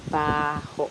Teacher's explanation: The noun for smell, which is baho, is stressed in the first syllable